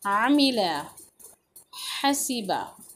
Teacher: आमिला, हसीबा, आ आइन की आवाज़ को वाजह करते हुए, आइन कहाँ से निकलेगा, हलक के दरमियाना हिस्से से निकलेगा